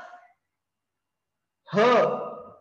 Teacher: तर हा ह आहे तो हवेचा जास्त लोट आहे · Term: महाप्राण